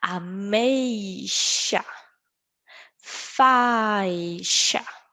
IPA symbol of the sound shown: ʃ